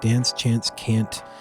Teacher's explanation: The A in words like dance, chance, can't. Very long.